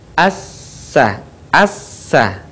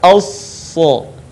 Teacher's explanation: Dan sifat serta karakternya pun tidak jauh berbeda dengan huruf sin. Yang membedakan antara sin dan shad adalah suaranya yang menebal saat kita melafalkan huruf shad.